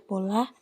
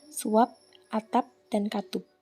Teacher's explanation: Bila berada pada akhir kata, fonem P tidak diucapkan secara lepas. Bibir kita masih tetap tertutup rapat waktu mengucapkan bunyi ini.